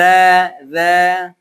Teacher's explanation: tidak ada nafas yang keluar